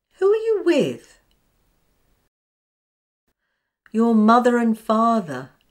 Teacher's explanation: the r is a linking r joining the first word to the second which begins with a vowel